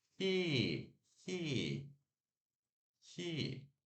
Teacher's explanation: E de igreja, que a gente sorri e segura um pouquinho